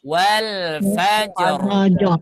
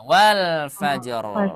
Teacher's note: sebelumnya fathah maka rnya dibaca tebal